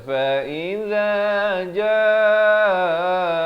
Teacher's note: di hujung lidah, fa iza jaa 4 atau 5 harakat.